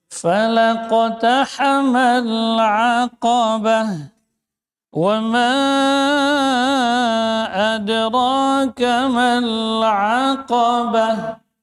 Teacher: Huruf wau rakhawa dan jahar. Wama mim tawasud ya panjang.